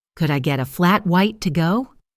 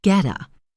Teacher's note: The words get a are linked and reduced, sounding like getta,